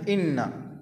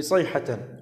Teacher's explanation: عندنا مخرج الحلق الهمزة إنا، وأيضا صيحة الحاء في صيحة أو واحدة